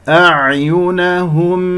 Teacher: الهمزة والعين تجاورتا في كلمة أعينهم، يجب أن أعطيها حقها، يعني أذهب إلى مخرج الهمزة ثم إلى مخرج العين لأنه متجاور، فيجب أن تكون عميقة.